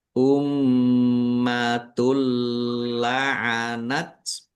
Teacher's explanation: mim tasdid dibaca gunah atau mendengung. Ditahan biar tampak mendengungnya. · Masuk tidak mendengung. Maksudnya dumah tanwinnya tidak dibaca langsung masuk ke huruf lam ditandai lamnya ada tasdidnya tetapi tidak mendengung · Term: gunnah, Idgham bila ghunah